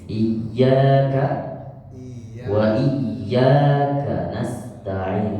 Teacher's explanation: Dua-duanya iyanya panjang dan lebih sedikit ditekan.